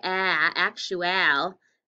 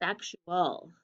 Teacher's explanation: There is often a schwa after the TU when it's AL.